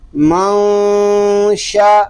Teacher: یہاں نون ساکن میں اخفا اس لیے ہو رہا ہے کہ نون ساکن کے بعد حروف اخفا میں سے شین آ گیا ہے. را اس لیے پر ہے کہ را کے اوپر زبر آ گیا ہے.